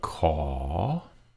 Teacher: call is rising comes down and then goes up call and that's a ah sound not a core right ah